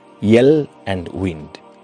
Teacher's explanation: In the production of these sounds, there is no obstruction to the airflow and no narrowing to cause audible friction. The two sounds in phonetic terms must therefore be regarded as vowels, but the English language regards them as consonants because they function as consonants.